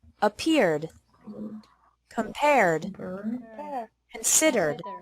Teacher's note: e d is pronounced like d with no extra syllable after verbs ending with an r sound